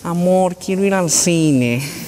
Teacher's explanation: ¿Cómo es? ¿Es más oral o es más nasal? Más nasalizada.